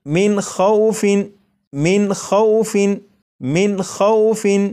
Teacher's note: اگر نون ساکن کے بعد ان 6 حروف میں سے کوئی بھی حرف ہو تو یہ جو نون ساکن ہے اسے ظاہر کر کے پڑھیں گے، جیسے آپ یہاں پر دیکھیں نون ساکن کے بعد خواہ ہے اور خواہ حروف حلقی میں سے ہے، اس لیے یہاں پر اس نون ساکن کو ظاہر کر کے پڑھیں گے، جیسے من خوف، من خوف، من خوف، تو یہ نون ساکن کو ظاہر کر کے پڑھا گیا۔